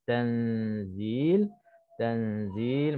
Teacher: Nun mati bertemu dengan zai, dengung, hukumnya ikhfa dua harakat. Tanzil, Tanzil maknanya kita masukkan, bukan masuk kita sembunyikan nun ke dalam zai.